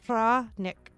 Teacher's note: Fra, A like in father, N like in no. No, ek is a short ek sound with a slight emphasis on the first syllable fra